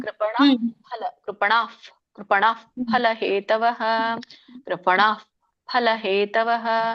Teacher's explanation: ಅದು ಮಧ್ಯದಲ್ಲಿ ವಿಸರ್ಗ ಇದ್ದಾಗ ಮುಂದಿನ ಅಕ್ಷರ ಒಂದು ಮಹಾಪ್ರಾಣ ಆಗಿ ಬರುತ್ತೆ ಮುಂದಿನ ಅಕ್ಷರ ಏನಿದೆ ಪ ಇದೆ ಅಲ್ಲ ಕೃಪಣ ಕೃಪಣ್ ಕೃಪಣ್ ಫಲ ಹೇತವಹ